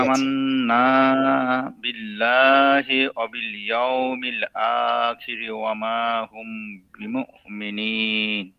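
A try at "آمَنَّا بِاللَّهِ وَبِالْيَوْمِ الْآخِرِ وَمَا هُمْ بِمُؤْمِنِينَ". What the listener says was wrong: এই তো মাশাআল্লাহ মোটামুটি হচ্ছে।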